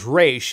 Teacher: not like in Spanish with the R, with the tip of your tongue, but it's from the back of your throat, like you're gargling water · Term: resh sound